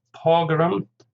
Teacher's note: Pogrom, stress on the first syllable, 2 syllables obviously